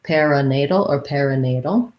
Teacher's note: main stress though on that nay syllable that's where you want your length